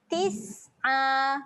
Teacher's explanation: Huruf sin. Ketika mati kena keluar angin.